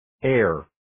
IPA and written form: ɜːr (Err)